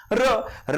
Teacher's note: र या वर्णाचा उच्चार करताना हवा कंपन पावते म्हणून रला कंपित वर्ण म्हटलं